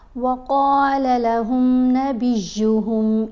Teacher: قاف کو ایک الف جتنا لمبا پڑھیں گے اور اس کو پر پڑھیں گے، موٹا بھی پڑھیں گے